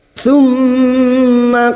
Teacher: Mim yang bertasdid gunna musaddada kita dengungkan selama 3 harakat. · Qadha huruf dhad tapi lidah nempel pada gigi gerham atas, boleh kiri boleh kanan.